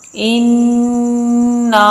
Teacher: نون مشدد ہونے کی وجہ سے نون پر غنہ بھی کیا جاتا ہے مشدد ہونے کی حالت میں، ٹھیک ہے۔